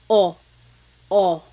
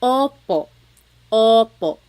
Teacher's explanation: Sometimes I think of it like having a ball in your mouth. Your tongue gets kind of pushed back and down a little bit, and the inside of your mouth is open and wide. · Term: letter O